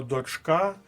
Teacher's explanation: Останнє слово дочка має наголос на другому складі